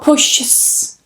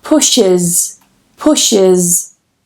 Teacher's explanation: So not pushes, like I hear some students trying to do. You need to add an extra syllable. You need to add that schwa.